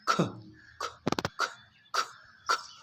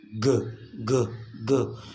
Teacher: the k is voiceless, and g is voiced